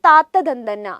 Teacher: ഉച്ചാരണ അവയവം എന്ന് പറയുന്നത് എവിടെയാണ് പല്ലിലാണ് ദന്തത്തിലാണ് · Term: ദന്ത്യം